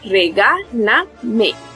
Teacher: Vemos que su sílaba tónica se encuentra en la antepenúltima sílaba.